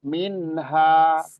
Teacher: nun sukun ketemu ha ketemu ha dibaca jelas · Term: izhar halqi